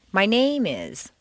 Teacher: example is my name is as opposed to my name is if you stress name it sounds as if you're going to continue with more personal information